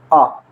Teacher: जीभ कहीं नहीं टच हो रही लेकिन जोर कहां पड़ रहा है मध्य भाग में जीव के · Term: मध्य स्वर